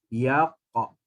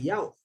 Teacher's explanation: pangkal lidah ke langit-langit atas, sentuh lepas, sentuh lepas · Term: qalqalah